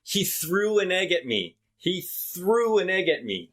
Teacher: we take the w from through and put it in front of egg and then we take the g in egg and put it in front of at so instead of he threw an egg at me it's he